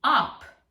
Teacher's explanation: in a word in German ending with -ab, the pronunciation of that would be Ahp - that b would sound as p